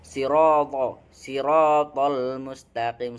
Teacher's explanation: keduanya harus tebal dengan menaikkan pangkal lidah. To bukan ta, bukan to, bukan siroto, tetapi sirotol mustaqim.